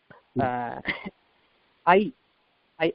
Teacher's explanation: இந்த ஐ என்பது நெடில் எழுத்து அதற்குரிய மாத்திரை இரண்டு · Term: ஐகாரம்